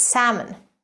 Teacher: the L is actually silent